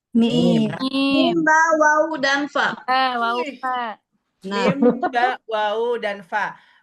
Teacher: Mim ditutup ringan, ba lebih kuat sedikit, wawu hurufnya kayak O tapi monyongnya nggak terlalu monyong. Fa bibir bawah ketemu dengan Bibir Gigit atas.